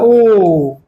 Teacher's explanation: जबकि यहां वाला ओ क्या है, इसमें दो से ज्यादा मात्राएं प्रयोग हो रही हैं, मतलब ओ को और लंबा खींचना है। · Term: प्लुत स्वर